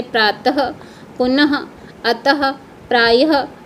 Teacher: विसर्ग का उच्चारण अह के रूप में होता है